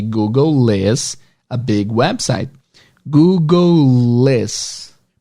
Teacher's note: Porque você está fazendo a posição do L, Google, e não dá tempo de voltar para fazer o is. Então você vai juntar tudo numa coisa só.